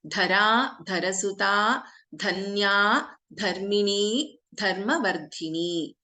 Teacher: all the names in this first line are starting with Dha, Mahaprana Dha